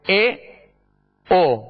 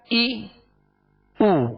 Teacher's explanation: اے او یہ مجہول طریقہ ہے اور معروف کیا ہے ای او